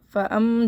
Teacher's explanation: ہم حمزہ کو میم سے ملا کر ایک دفعہ پڑھیں گے اور تشدید پہ میم مشدد پہ غنہ بھی کریں گے۔ فَأَم جلدی ملانا ہے، الف سے پہلے زبر ہے، یا ایک الف برابر اس کو کھینچ کے پڑھیں گے، یہ الف اس سے پہلے زبر ہے۔